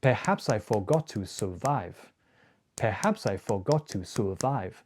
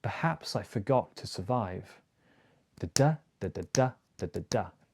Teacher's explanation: Short long, short short long, short short long.